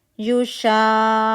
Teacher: شا کو ہم نے مد کو 6 کاؤنٹ اسٹریچ کیا ، قو مشدد کی طرح پڑھا، کونا، جو اگر روانی میں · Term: مد لازم کلمی مثقل